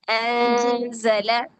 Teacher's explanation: انزا اخفا باری کیجئے. زا کے مخرج کے قریب جائیے پھر نون کی آواز کو چھپائیے